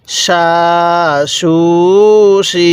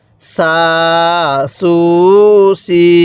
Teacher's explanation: এই শিনের আওয়াজটি মোটা হবে, সিনের আওয়াজটি চিকন হবে।